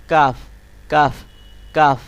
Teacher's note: জিহ্বার যে গোড়াটি আছে তার একটুখানি সামনের অংশটাকে আপনার উপরের তালুর সাথে লাগাতে হবে